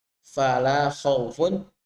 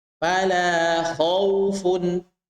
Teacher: Perhatikan fala khawfun, hanya huruf kha saja yang tebal. Maka kita bisa dengarkan, perhatikan dengan sama bahwa ketika huruf kha diucapkan, maka kita akan dapati sesuatu yang lebih tebal daripada huruf yang lainnya.